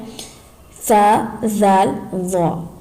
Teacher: जबान का सिरा ऊपर के दांतों के अंदरूनी किनारे से अदा होते है